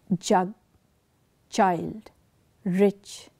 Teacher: the sound that is being created is both plosive it is also a fricative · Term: affricate